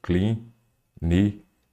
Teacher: a sílaba tônica é aquela acentuada não é a última não é a penúltima é a antepenúltima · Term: proparoxítona